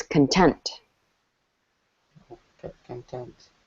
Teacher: The emphasis is on tent.